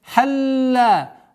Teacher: удвоение лям, после которого долгота в размере двухогласовок фатха.